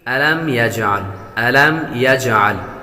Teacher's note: میم پر غنہ نہیں کریں گے